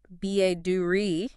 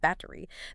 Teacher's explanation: That t gets soft almost like a d. >> It's a flap t.